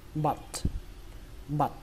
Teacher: Các bạn nhớ là âm á nhé. Và kết thúc bằng âm t bắn hơi